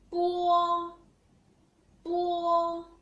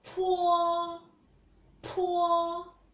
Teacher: When we pronounce bo sound, the paper didn't move. When we pronounce po sound, the paper moved